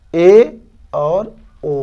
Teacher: वे स्वर जिनके उच्चारण में मुख आधे से कम खुलता है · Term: अर्ध समृत स्वर